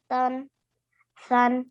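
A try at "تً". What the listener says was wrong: Oh, read the two tas. Why are you reading only one? It's tan, and then sun. This is the round ta, don't you see?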